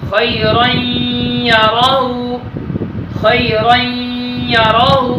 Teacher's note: نون تنوین کے بعد یا آیا ہے، اس وجہ سے ادھر ادغام مع الغنہ کر کے پڑھیں گے